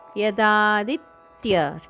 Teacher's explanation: ಯದಾದಿತ್ಯ ದಿಯ ಮೇಲೆ ಆಘಾತ ಇದೆ ಮುಂದಿನ ಅಕ್ಷರತ್ಯ ತಕೆ ಯದ ಜೋಡಣೆ ಆತ ದನ್ನು ಸ್ವಲ್ಪ ಒತ್ತುಕೊಟ್ಟು ಹೇಳಬೇಕು ಯದಾದಿತ್ಯ